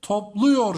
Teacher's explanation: Bakın buradaki A sesi ne oldu? U sesine dönüştü. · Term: ünlü daralması